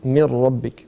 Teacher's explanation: on va fusionner le nun avec un ra qui va donner naissance simplement à un ra. Donc on va dire mir rabbik.